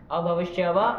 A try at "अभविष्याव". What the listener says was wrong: अदंत दीर्घ होता है ना, ध्यान रखना है, अदंत मिलेगा तो करेंगे ना